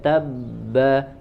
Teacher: Setelah huruf ta ada ba bertasydid, dirapatkan bibirnya dan ditahan ya. Ada syiddah, ada jeda.